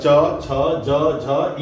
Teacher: तो वहां से होगा च, छ, ज, झ, ञ मतलब मुंह की छत के पिछले भाग से ये आवाज आती है